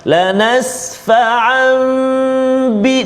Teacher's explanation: Kemudian bertemu pula pada lanas fa'ambi, tanwin bertemu dengan ba, tanwin bertemu dengan ba, iqlab. Lanas fa'ambi, dengung juga dua harakat